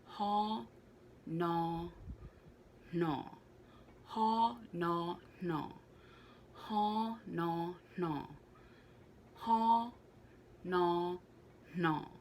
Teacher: the h is still very much there however it's not as prominent as the n